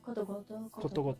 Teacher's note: It's a little bit like weird because of the sound, because you're starting with an O sound and then going back to a K sound. And so when you say koto koto, it changes to koto goto